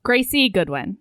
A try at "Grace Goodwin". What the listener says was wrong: No, Grace. Yeah, you've been saying Gracie, so I made sure. I double checked when I put up the thing, but it's just Grace. Yeah, you said Gracie Goodwin a lot, but